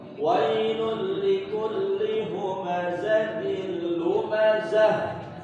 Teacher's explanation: Setiap tak marbutoh dibaca kasroh atau dibaca sukun atau diwakafkan, berubah dia hurufnya, bukan tak lagi, menjadi ha besar.